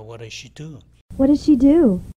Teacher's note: 이때는 T와 D의 발음도 중복되니까 이 T가 없어지죠.